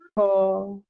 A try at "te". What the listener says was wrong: যেমন আপনি এটাকে বলেছেন থ জাস্ট ডাইরেক্টলি অনেকটা থ এর মতোই বলে ফেলছেন এটা অ্যাকচুয়ালি থ বলবেন না না আচ্ছা আপনাকে বলি ফার্স্ট বললো কিভাবে হবে দেখেন ত থ ন ল ত থ ন ল এরকম আপনার বলেন তো দেখি